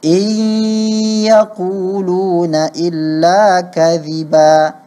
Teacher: Kita leburkan nun itu ke dalam huruf ya sehingga ya menjadi tebal, tapi dia harus diberi gunnah